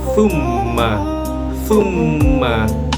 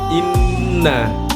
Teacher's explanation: keluarnya huruf dari pangkal hidung dengan suara senggau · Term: alkhaisum